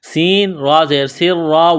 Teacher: را زیر ری، را کو باریک کرنا ہے زیر کی وجہ سے۔ سین میں سیٹی کی آواز پیدا کریں گے، سین کو باریک کرنا ہے، را کے ساتھ پلس کریں گے۔